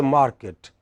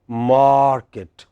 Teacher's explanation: our a is not as long as the English a